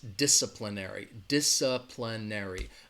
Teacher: the stress is on that first syllable dis disciplinary disciplinary again that second syllable has that schwa DISA